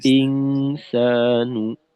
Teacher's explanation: হামজাতে আরেকটু জোর লাগানো, হামজা যেন তাসিল হয়ে না যায়